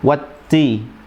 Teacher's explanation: Dan karena memiliki sifat al-hamsu, maka ada desahan di situ